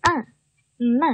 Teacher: 后面的这个▁man▁啊有一个鼻腔元音